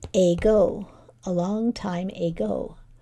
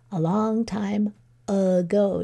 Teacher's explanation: So instead of saying A like we should, we schwa'd it.